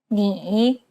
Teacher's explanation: it's the most unique tone out of all the tones because the pitch dips and then rises imagine a ball bouncing on the ground as you make this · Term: third tone